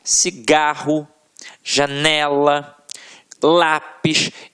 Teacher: a sílaba que a gente proferiu com mais força sempre esteve na penúltima sílaba · paroxítonas, em que a sílaba tônica está na penúltima sílaba